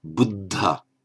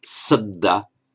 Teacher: We have a doubled consonant, the double D, and it's aspirated as well, as the second one's got a puff of breath after it.